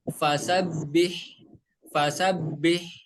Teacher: dari tengah tenggorokan ya dan suara yang keluar lembut lebih dan ketika membaca huruf H kecil yang berharakat sukun suaranya itu harus dialirkan suara dan nafasnya itu harus dialirkan